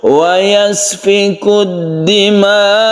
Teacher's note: An-nabr itu meninggikan sedikit suara dari sukun hamzah kalau kita wakofkan.